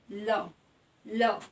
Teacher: जब आप ल का उच्चारण करेंगे तो हवा हमारे जीभ के साइड से बाहर निकलती है। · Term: पार्श्विक व्यंजन